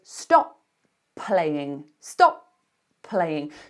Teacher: we have to be ready to release that first consonant, but don't actually release it.